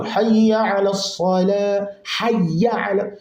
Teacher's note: Kwa sema tia shadda kwenye hayya, usitie ghunna, tia shadda. Wa tafkhimu as-sala, hayya ala as-sala, swadi yake itamke vizuri ili swadi isifanane na sini.